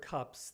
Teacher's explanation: in the English word cups the S is pronounced as a normal unvoiced s because the preceding consonant p is an unvoiced consonant